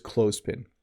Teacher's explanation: So you don't have to say the TH as a the sound. It's just clothespin.